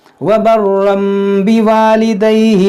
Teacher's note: اس تنوین کے اندر جو نون ساکن ہے اس کو اس میم سے بدل کر پڑھیں گے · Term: اقلاب